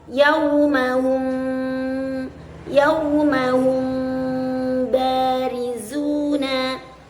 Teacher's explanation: Apabila sahabat menemukan huruf mim sukun yang bertemu dengan huruf ba ketika melafalkan ayat-ayat suci Al-Quran, maka jangan lupa itu disebut dengan hukum ikhfa syafawi. Cara membacanya adalah menyamarkan huruf mim ke dalam huruf ba.